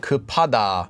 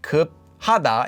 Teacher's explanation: that extra bit of air gets added to the p up at the bottom